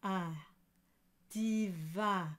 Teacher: e and you you drop the soft palate and it turns into ah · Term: the nasal, nasalized sound